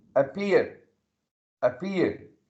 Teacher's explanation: Like that is the peak point of pronunciation. Like your voice reaches at the peak when you come to P when you pronounce appear. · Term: stress